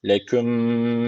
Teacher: Allah lafzı burada ince okunacak. Çünkü öncesindeki harf alttan bağlanıyor.